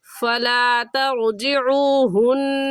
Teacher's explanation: रा साकिन से पहले ज़बर आ गया तो रा साकिन को पूरी यानी मोटा करके पढ़ेंगे